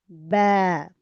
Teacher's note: بند ہونٹوں کے گیلے حصے سے ادا ہوگا با